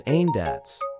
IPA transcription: ˈhændaʊts